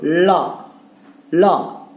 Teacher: மேல் அன்னத்தினுடைய நடுப்பகுதியை தொடுவதால் இது வரும்